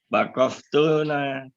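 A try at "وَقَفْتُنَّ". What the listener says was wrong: Bukan wakof tuna di terakhirnya wakof. Tetap di sini wakof tunna. Tunnya di ini kan Pak, di tasdid. Wakof tunna.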